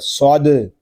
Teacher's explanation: دال ساکن ہے، اس میں کلکلہ خوب ظاہر کریں گے